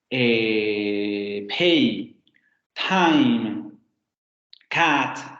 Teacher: las consonantes oclusivas sordas, en inglés se van a aspirar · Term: aspiración